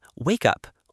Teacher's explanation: Wake up is often pronounced quickly. Wake up. Almost like one word.